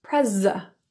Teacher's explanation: The I in president is pronounced as a schwa.